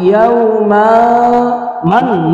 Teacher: اب نون کو ادا کرتے وقت زبان جو ہے وہ نون تالو کے ساتھ لگتی ہے، لیکن جب ہم نے نون کی آواز کو ناک میں گم کرنا ہے، اخفاء کرنا ہے، تو پھر یہ زبان تالو کے ساتھ نہیں لگے گی